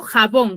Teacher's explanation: lleva la mayor fuerza en la última sílaba